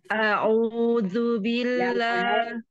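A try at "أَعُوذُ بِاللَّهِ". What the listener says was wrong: A jangan nanggung. A buka saja dari begini. Kebuka A jangan nanggung ya. A enggak. Dia mundur. Jangan mundur. Naik dia. Pangkal lidahnya jangan kemundur. Kalau mundur jadi sayyidah. Jadi dia tetap naik. Kan ujung lidah kena apa tumbuhnya gigi. Tapi pangkal lidah sama tengah lidahnya naik. Kalau tah, tah, dia ke depan. Nah, toh naik.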